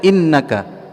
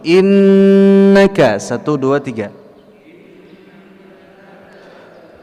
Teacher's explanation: dibaca dengan ditahan dua harakat dengan dengung di dalam khayshum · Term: gunnah dua harakat